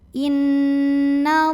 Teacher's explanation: lam pada lafaz Allah dibunyikan secara tafkhim sebab huruf sebelumnya berbaris fathah, maka dibacanya tebal, pangkal lidah angkat.